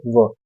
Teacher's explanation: સ ઓષ્ઠ્ય પ ફ બ ભ મ અને જે દંતોષ્ઠ છે દાંત અને ઓષ્ઠ બંનેમાં મળે તેવો છે